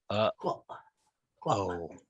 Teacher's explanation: Just a reminder, the glottal stop is the oh when you say oh, right? Because we can't say oh without that pause, because that pause is a glottal stop.